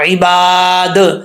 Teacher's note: اب یہاں پر جو دال آ رہا ہے، اس دال میں قلقلہ ہے، کیونکہ دال کو ساکن کر رہے ہیں